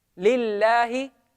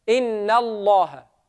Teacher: Lam in Allah, it becomes soft if it's preceded by a kasra.